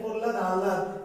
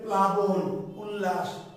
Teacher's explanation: প্রহ্লাদ হয়ের উচ্চারণটা বেশি হচ্ছে, লটা হালকা সফট হয়ে যাচ্ছে। আর এখানে প্লাবন, উল্লাস, লয়ের উচ্চারণ লয়ের মতো, একদম স্ট্রেট লয়ের মতো, তাহলে সেটা ল ব্যঞ্জন। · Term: ফলা